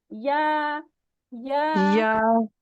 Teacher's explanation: तालु से अदा होता है। ठीक है, वस्तुल लिसान जो है जब तालू से लगेगा तो या गैर मदिया अदा होगा।